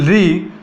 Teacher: अपने ऊपर वाले दांतों के वहाँ पे जबान टच होती है, तब जाकर री की आवाज़ उत्पन्न होती है।